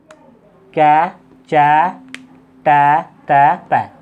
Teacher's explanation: उच्चारण करने में मुख से स्वर तंत्र में कंपन नहीं होता है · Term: अघोष